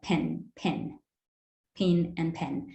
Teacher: So pin and pen, before nasals, it sounds very similar.